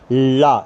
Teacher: दो वायु जो है उच्चारण स्थानों के बगल माने बराबर से होकर के निकलती है, उसे हम पार्श्विक व्यंजन कहते हैं। जैसे ला का उच्चारण करते समय वायु जीभ और तालु का स्पर्श करके इनके पास से निकल जाती है, ला। देखिए आप, जीभ है ऊपर, जीभ गई ऊपर, ला, इस तरह से आपने बोला, तालु का प्रयोग हुआ और बाहर टच करती हुई निकल आई।